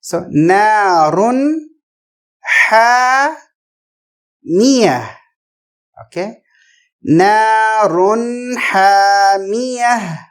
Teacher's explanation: نون کو ظاہر کریں گے کیونکہ ہا آ رہا ہے جو حروف حلقی ہیں، تھروٹ لیٹر میں ہے، مطلب جو تھروٹ سے ادا ہوتے ہیں.